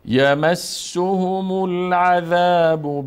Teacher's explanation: بعدش سین و ه و میم هر سهش ضمه دار هست بعد حرکت آخر میم میچسبانیم به لام